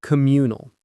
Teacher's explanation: The stress is on that second syllable.